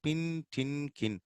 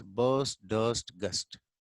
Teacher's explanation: Air coming from the lungs is stopped at some point during the formation of the sound. Some of these sounds are unvoiced, such as pin, tin, kin. Some of these are voiced, such as burst, dust, gust.